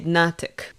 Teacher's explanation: When I reconstruct NTK, I usually say natik, and I usually put the emphasis on the first vowel.